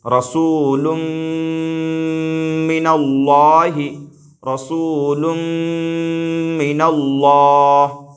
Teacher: آ رہا ہے، لہٰذا یہاں پر بھی ادغام مع الغنہ ہوگا، یعنی لام کو میم سے ملا کر کے پڑھیں گے اور اس طور پر ملائیں گے کہ غنہ بھی ہو